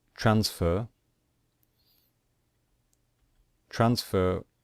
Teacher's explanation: stressed then we simply add Eed so for example transfer transfer we stress the first syllable so we do not stress the final syllable and so we just add Ed we do not double the